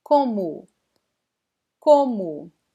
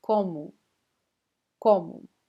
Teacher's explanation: So we have this nasal sound in this first vowel, and the last O is pronounced like a weak U.